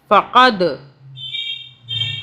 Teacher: دال کو ہم قلقلہ کریں گے، جھٹکے سے پڑھیں گے